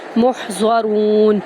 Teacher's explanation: میم کو ہا میں داخل کریں گے وسط حلق سے ادا کرتے ہوئے، ضاد اور را کو پر کرتے ہوئے را کو واو میں داخل کریں گے اور نون کے ساتھ